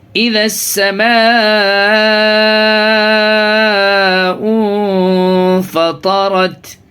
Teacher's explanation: یہ ذال کو جو ہے یہ سین میں ملائیں گے، یعنی حروف شمسی کا قاعدہ یہاں پہ ہوگا۔